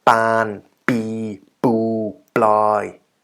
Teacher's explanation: now you could imagine it's a hard P, so you cannot transcribe using the soft B in English